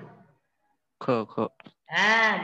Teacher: क मध्ये ह मिसळला ख होतो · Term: महाप्राण